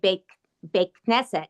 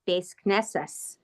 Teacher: changing the tav to sound not like a T as in Thomas, but like as an S as in Sam